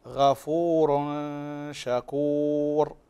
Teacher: فتنوين هنا وبعده الشين، والشين حروف الإخفاء الحقيقي، فتخفي هنا النون عند الشين